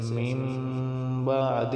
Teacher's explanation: نون ساکن کے بعد با آ گئی ہے، تو ہم نے کیا کیا ہے، نون کو ہلکی سی میم سے بدل دیا، چھوٹی سی میم۔ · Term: اقلاب